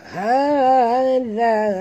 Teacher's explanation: za sini ya, jaga makhrajnya di hujung lidah